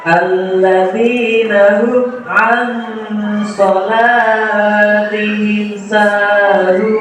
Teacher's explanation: Ikhfa, karena nun sukun bertemu dengan huruf shad. Cara membacanya adalah sama, dengan mendengung dan ditahan selama 3 harokat. Mad alif disukun, karena huruf mad jatuh sebelum huruf yang diwakafkan. · Dalam surat Al-Ma'un ayat ke-5 ini terdapat beberapa hukum batal, yaitu alif lam syamsiah, karena huruf lam bertemu dengan huruf dal. Cara membacanya adalah memasukkan huruf lam ke huruf dal, sehingga huruf sesudah lam bertasydid. Mad tabi'i, karena huruf dal berharokat kasroh bertemu dengan ya sukun.